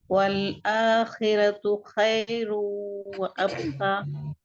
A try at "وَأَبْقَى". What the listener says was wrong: دیکھیے اب کا آپ نے با کو باؤنسنگ کی صفت ہے. تھوڑا ہیوی لیٹرز کی پریکٹس کریے. قاف, اب قا. دیکھیے باؤنسنگ کلکلا نہیں ہو رہا ہے, کلکلا کرنا ہے.